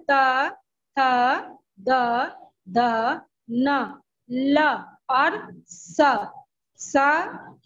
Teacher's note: देखिए, हम जब दंतय वाले शब्दों व्यंजन शब्दों को निकालेंगे, तो हमारा जो जीभ है वो दांत से जाके टकराता है, और तब शब्द हमारे बाहर आते हैं। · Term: दंत व्यंजन